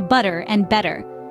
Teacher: and then there's the everpresent T sound in the American accent the T in words like butter or better often changes to a D sound